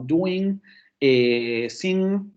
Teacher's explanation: Después, el fonema velar, sí es velar, ¿no? El fonema velar nasal sonoro, saben ustedes que este fonema es el que aparece en palabras como doing, sing